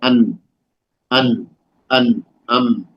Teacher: अगर नाक बंद करके अन और अम बोले, प्रैक्टिस कर लें आप, खुद ऐसे नाक बंद करें और आप बोले, तो देखें नाक खुलना आपका शुरू हो जाएगा, क्योंकि वहां पर मीम या नून के आवाज का ताल्लुक है, गहरा ताल्लुक है, नाक से है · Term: गुन्ना